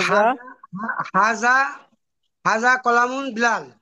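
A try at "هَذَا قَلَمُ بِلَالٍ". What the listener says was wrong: কলামুন না। হ্যাঁ, বলেন হাজা। হাজা কলামু বিলালিন।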